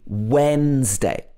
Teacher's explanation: It's got when at the beginning. So the D is not pronounced at all.